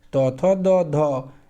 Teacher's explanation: ये दंत से होते हैं, इसलिए दंत्य कहते हैं।